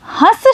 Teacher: जब आप पहले शब्द का उच्चारण कर रहे हैं, अनुस्वार की जो ध्वनि है उसका उच्चारण करते समय यहाँ पर जो अनुस्वार है इसका उच्चारण करते समय ध्वनि नाक से निकल रही है, और जब आप मेरे साथ हंस शब्द बोलेंगे तो आप पाएंगे कि इस चंद्र बिंदु का उच्चारण करते समय ध्वनि नाक और मुंह दोनों जगह से निकल रही है